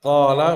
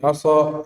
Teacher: Maka qala biasa saja qala, tapi asa dinaikkan, lebih kuat lagi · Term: itbaq